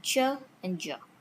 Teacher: Then comes Affricates. Starts as a stop, released as a fricative